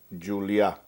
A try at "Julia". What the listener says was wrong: It's not the H sound. It's not Julia.